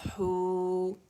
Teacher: ح ضمہ, واو سکون حو, واو مد طبیعی حرکتین, طبیعی حرکتین, 2 کاؤنٹ کے لیے آواز گول ہو جائے گی